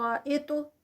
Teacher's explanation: تو ہیوی اور ساتھ میں تو کا قلقلہ ہوتا ہے